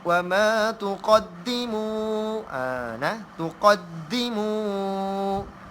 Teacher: Di dal tu dia kena tekan. Tekan sebab dia ada huruf tasydid. Dal tu ada tasydid.